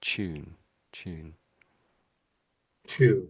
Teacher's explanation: So, it's a t, but we say ch.